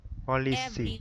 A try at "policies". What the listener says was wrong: So you have to pronounce the letter S too. Policies with letter S. Policies.